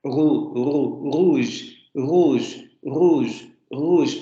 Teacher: este fonema no se articula con vibración, no va a haber choques, no se va a pronunciar sino simplemente los órganos se van a aproximar para generar este movimiento fricativo. · En este caso estamos ante un uvular, es decir, la consonante estaría un poquito más atrás en la cavidad oral, porque la úvula está un poquito después del velo.